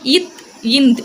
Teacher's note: மேல் வாய் பல்லுல பல்லினுடைய அடிப்பகுதியில போய் நம்மளுடைய நாக்கோட நுனி வந்து படுறது மூலமா பிறக்குது